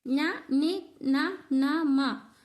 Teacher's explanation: ముక్కుతో పలికేటివి కాబట్టి వీటిని అనునాసికాలు అంటాం.